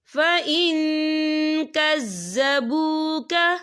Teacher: نون ساکن کی آواز کو ناک میں چھپائیں گے۔ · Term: اکفا